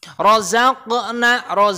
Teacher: Qalqalah sughra ya, kecil. Karena apa? Matinya di tengah-tengah ayat.